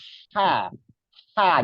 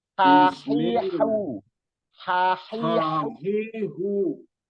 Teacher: rongga tenggorokannya ditekan disempitkan Pak jadi tipis suaranya tipis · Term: ha tipis